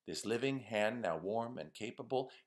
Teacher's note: big pentameter it's the same beat that Shakespeare liked to use 10 beats per line with the stress on every other syllable so it's 10 syllables per line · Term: iambic pentameter